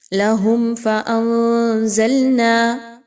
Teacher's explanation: میم ساکن کے بعد فا کا حرف آ گیا، آپ نے یہاں پر میم ساکن پہ بالکل بھی نہیں رکنا، یہاں پر اظہار شفوی کیجئے۔